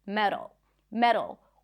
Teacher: Notice the D. It's really light. It's like a flap T.